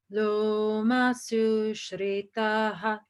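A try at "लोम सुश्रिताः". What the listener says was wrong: That was so almost perfect. Loma Sushritaha. That's a long ah there. And sometimes they're short, sometimes they're long. Shritaha.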